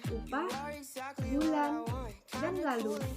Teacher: dibentuk dengan kedua bibir sedikit maju kedepan dan sedikit membulat dan belakang lidah sedikit terangkat